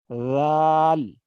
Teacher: رال، اس کو بھی نرمی کے ساتھ پڑھتے ہیں. رال، زبان کی نوک یعنی زبان کا سرا جب ثنایا علیہ کے کنارے سے لگے تو رال ادا ہوتا ہے